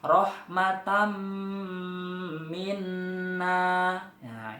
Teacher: Ustaz kasih contoh tanwin 1 saja, yaitu fathatain bertemu dengan huruf mim ya. Rahmatam minna ya, itu cara membacanya mendengung yang lama. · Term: Idgham Bighunnah, idgham bi gunnah